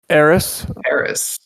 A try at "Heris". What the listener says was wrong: The H is silent. Like the D.